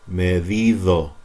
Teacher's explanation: D, when it's between vowels, like e, or o, D becomes like th in the.